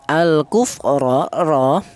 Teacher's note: Di mana huruf ra ini berharokat fathah seperti di atas tadi, ini dibaca tafhim atau dibaca tebal ya. Ra dibaca tebal atau dibaca tafhim, alasannya huruf ra berharokat fathah.